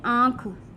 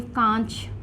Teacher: चंद्र बिंदु जो है वो अनुनासिक है, जो कि नाक और मुख दोनों से बोला जाएगा